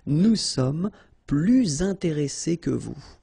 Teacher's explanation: Okay, and in that case, well, you make this little link, little liaison between the two, so you hear a little bit this S